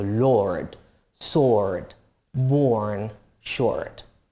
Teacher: Right, in American English, you do pronounce the R